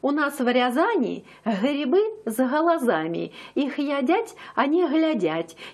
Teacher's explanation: там г произносится уже мягко и такое г называется не взрывным а щелевым